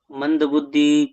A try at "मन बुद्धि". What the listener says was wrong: मंद नहीं है, धीमी बुद्धि नहीं है।